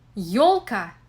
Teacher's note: a combination of the fricative consonant y and the vowel o. This is exactly the same combination which can be heard in the English word yours.